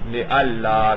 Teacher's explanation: اور وہ جو نون تھا وہ لام بن کر لام میں ادغام ہوا، اس کا کیا بن گیا لِأَلَّا، کیونکہ نون اور لام کا مخرج قریب ہے